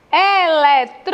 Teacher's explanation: Antepenúltima sílaba mais forte, ela é proparoxítona.